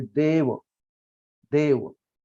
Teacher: तो यहाँ ए के आगे वह कंसोनेंट जो है वो सिंगल है, इसलिए हमने ए को जरा खींचा है, देव वो ऐसा खींचा है, मतलब जरा दीर्घ हमने उसका उच्चारण किया है · यहाँ ए के आगे वह कंसोनेंट जो है वो सिंगल है, इसलिए हमने ए को जरा खींचा है, देव वो ऐसा खींचा है, मतलब जरा दीर्घ हमने उसका उच्चारण किया है, देव।